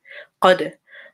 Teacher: dal with a sukoon is qalqala. So you have to give it that bounce. You have to say qad.